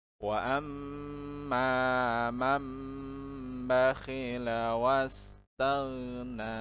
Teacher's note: Iklab yaitu apabila ada nun sukun atau nun mati dan tanwin bertemu dengan huruf ba, maka bunyi nun sukun atau tanwin itu diganti menjadi bunyi mim disertai dengan dengung selama 2 sampai 3 harokat.